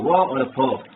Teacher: दंतोष्ठ, व और फ, अर्थात दांत और होंठों दोनों का प्रयोग किया जाता है, इसलिए दंतोष्ठ कहलाते हैं